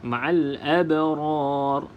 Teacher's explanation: bacaan ro tafkim itu bacaan ro tebal sebab sebelumnya huruf mad dan sebelum Mad tersebut berbaris di atas maka bacaan ra di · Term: ra tafkhim